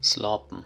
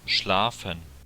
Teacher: The P sound, the P, became a F.